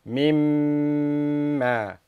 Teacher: So the first thing that we do, because it is one of the letters of يرملون and specifically ينمو, so we join it first, we say mim, and then we apply غُنَّة because it is of the letters of ينمو, and we hold it for two harakat